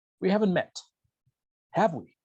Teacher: Voy a ascender mi entonación en mi tag, porque le estoy diciendo a la persona, no estoy seguro, estoy casi, incierto, estoy 100% incierto de que no nos hemos conocido. Entonces, voy a usar un rising intonation, una entonación ascendente.